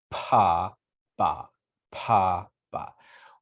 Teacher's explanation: when you make that paw sound you can feel a little puff of air